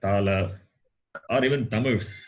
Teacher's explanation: tongue touches the base of the upper teeth. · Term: dantya